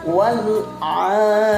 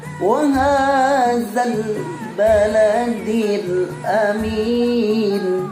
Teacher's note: Lam sukunnya tidak boleh dikejatkan, tidak boleh ditekankan. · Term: alif lam qamariyah